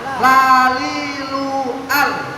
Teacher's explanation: Sisi lidah bagian depan mengenai gusi gigi sari yang atas. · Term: lam